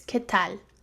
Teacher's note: the L is not pronounced from the back of my mouth instead my tongue is against my teeth